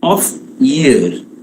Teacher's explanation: Of year, of is unstressed, year is stressed.